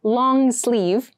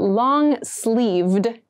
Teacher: goes until the wrist this is what we consider long and make sure you clearly pronounce that d sound at the end